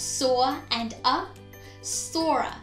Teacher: you hear that intruding r between the words soar and uh sora soar ends with or sound and ah is of course